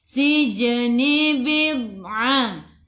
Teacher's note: Qalqalah surah, lantunannya kecil.